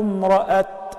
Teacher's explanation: and I stop, I would only pronounce it as ta, not as ha